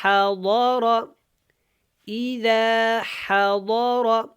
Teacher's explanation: یہ جو ضاد ہے اور را یہ دونوں موٹے ہیں، ان کو پر پڑھنا ہے